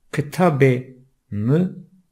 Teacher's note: kelimelerde vurgu bu sesin yani E sesinin üzerindedir. Okurken bu sesin vurgulu okunması gerekir.